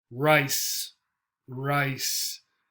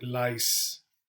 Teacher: The R, the tongue sort of curls up around and stays away from the teeth.